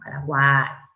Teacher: cerrada U, abierta A, cerrada I, con acento en la A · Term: triptongo